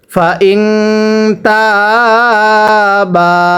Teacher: নুন সাকিনের পরে তা ইকফার গুন্নাহ করে পড়তে হয়